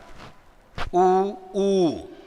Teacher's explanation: जैसे अ आ ये सवर्णी है, उच्चारण स्थान कंठ है। उ ऊ ये सवर्णी है, उच्चारण स्थान ओष्ठ है